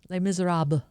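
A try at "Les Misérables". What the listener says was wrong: Yeah, the S is silent.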